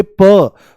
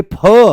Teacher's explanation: इनके बारे में बोला जाता है महाप्राण पेट से बोले जाते हैं। तो जैसे ही आप बोलोगे प, तो प आराम से बोला जाएगा, और जैसे ही बोलोगे फ, तो फ एकदम से कहां से आएगा? पेट से आएगा, ज्यादा दम लगाना पड़ेगा।